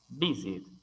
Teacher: visit también tiene énfasis de sonido en la primera sílaba, visit.